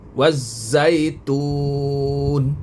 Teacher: Jadi nun ni tak bunyi. Dia bunyi wazzaitun. Asalnya wazzaituni.